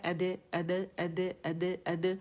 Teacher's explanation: half زبر آواز ہوتی ہے قلقلے کی